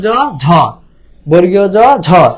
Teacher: ঝ হচ্ছে মহাপ্রাণ, তাহলে বর্গীয় জ অল্প প্রাণ